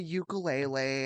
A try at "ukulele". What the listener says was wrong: Wait, what? Why do you say lay? Yeah, that's how it's spelled. You can't read E to AY. It's ukulele, not ukulele.